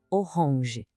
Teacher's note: Tenta sentir o som saindo um pouquinho pelo nariz no final.